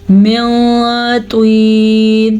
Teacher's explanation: तुआ को पुर पढ़ना है क्योंकि तुआ हरूफे मुस्तालिया में से है